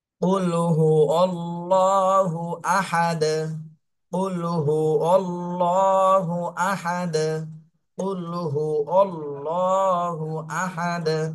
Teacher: যদি সাকিন আসে তাহলে কলকলা করতে হয় এখানে কলকলা করতে হবে দাল সাকিন হয়ে গেলে কলকলা হয়ে যাবে